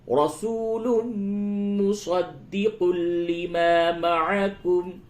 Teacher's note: میم مشدد ہے، غنہ کیجئے